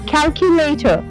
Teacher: र नहीं बोलना लास्ट में. कैलकुलेटर.